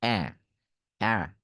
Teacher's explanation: অ্যা উচ্চারণ করবেন নাকের মধ্যে নিবেন